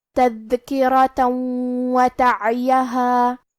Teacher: کلمت وتعیہا، واو حروف الادغام بغنہ میں سے ہے تو ہم یہ تنوین کو واو میں ملا کے غنہ اور تشدید کے ساتھ یہ حکم کو ادا کریں گے